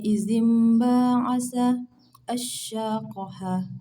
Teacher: bacaan nun mati atau tanwin tidak lagi dibaca sebagai nun atau tanwin berubah menjadi bunyi huruf mim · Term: iqlab